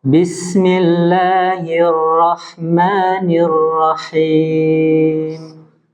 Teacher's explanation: sifat takrir ee yang ada pada huruf ra tetapi tidak boleh berlebihan · bergetarnya ujung lidah ketika pengucapan hurufnya dengan getaran yang halus disebabkan sempitnya makhraj